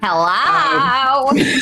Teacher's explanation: It had the same vocal fry, you know, that dragons have.